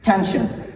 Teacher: that will be aspirated like like for example tension now here this word begins with t with t sound so we should aspirate this sound